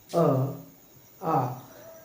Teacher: तो स्वर की बात करें तो कंठ से हमें मिलता है अ और आ। आप उच्चारित करके देख सकते हैं, अ, आ, यानी कि हमारे कंठ से निकल रहा है